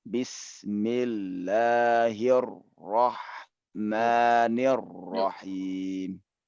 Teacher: Asal muasal penulisannya itu ro itu ada dua ro. Jadi kita harus penuhi hak kedua ro ini dengan cara menahan lebih lama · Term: huruf bertasydid